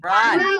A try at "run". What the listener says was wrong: Okay, bacanya nggak pakai U ya, pakai A. Run.